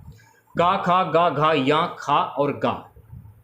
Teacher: ये कंठ से बोले जाने वाले उच्चारण है